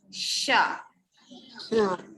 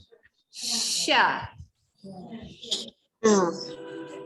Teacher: bila nak sebut huruf shin, okey, kita punya tengah-tengah lidah tu dia naik ke atas. Sya. Kita sebut dengan dia punya tempo tu perlahan, slow mo.